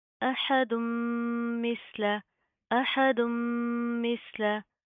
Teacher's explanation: जुबान बाहर की तरफ आएगी, नरमी से अदा होगा, इसके अंदर आपने सीन की तरह सीटी पैदा नहीं करनी। हा की आवाज़ को आपने प्रॉपर वाज़ह करना है, हलक से अदा होगा।